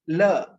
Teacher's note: a voiced alveolar lateral